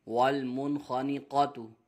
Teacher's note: نون ساکن کے بعد حرف حلقی میں سے خا آ رہا ہے، اظہار ہوگا، غنہ نہیں کریں گے